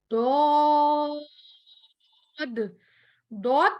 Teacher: जबान के किनारे जब ऊपर वाली दाढ़ों के मसूड़े से टकराएगा तो ये हर्फ मोटा अदा किया जाएगा